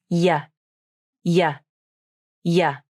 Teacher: For the Y consonant, the tongue moves up to the palate as you say the sound, then it moves back down. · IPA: /j/